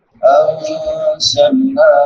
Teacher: نون ساکن کے بعد زا ہے حروف اخفا میں سے یہاں پہ اخفا ہوگا اور نون کے بعد مد منفصل ہے لمبا کر کے پڑھیں گے.